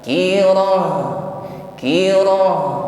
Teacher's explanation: Tadkirah. Baik ditutup dengan huruf ta marbutah, kita ucapkan sebagaimana ha